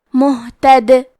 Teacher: کلمت مہتد کے آخری میں حرف دال ہے. اگر ہم یہ کلمہ پہ رکے تو دال پہ جزم سے رکیں گے، لہذا ہمیں دال کو قلقلہ سے پڑھنا ہے